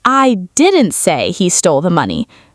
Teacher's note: Stress the word say.